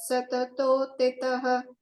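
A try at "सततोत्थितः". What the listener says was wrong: Stuvannama Sahasrena Purusha Satatothitaha. There is Mahakana there. Satatothitaha.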